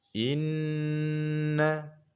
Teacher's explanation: bertasydid ini wajib didengungkan, hukumnya wajibul gunnah, ditahan hingga 3 harokat